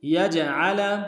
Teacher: الا یجعل، یا کو جیم کے ساتھ ملانا ہے، جیم جب ساکن ہو حروف قلقلہ میں سے قلقلہ کریں گے، عین کو گہرائی سے ادا کریں گے، لام کو نون سے ادا کریں گے۔